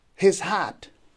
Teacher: His would be unstressed and hat would be stressed. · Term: iambic foot